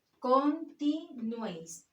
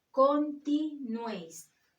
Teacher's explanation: El golpe de voz está en la última sílaba, nuéis.